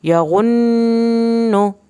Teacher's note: نون کی شد پہ آپ نے قدرے زیادہ دیر لگانی ہے